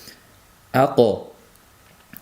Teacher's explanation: sukunli holatda qof tebralib chiqishligi kerak bo'ladi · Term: qalqala sifati